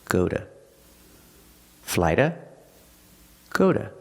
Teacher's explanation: We pronounce the word to as d when it's not stressed, but it's after a vowel.